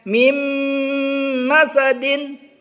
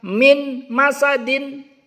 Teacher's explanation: Jadi nun sukun melebur ke huruf mim. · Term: idgham bi gunnah